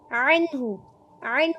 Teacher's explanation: ऐन को वस्ते हलक से अदा करेंगे। अन हा की पेश को छोटा पढ़ेंगे।